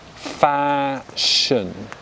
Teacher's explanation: good so in receipt pronunciation we pronounce it as fashion so the second syllable we're unstressing it with the schwa sounds · aspirate as much fashion right whereas with receipt pronunciation good and the second syllable the mouth remains relaxed because it's unstressed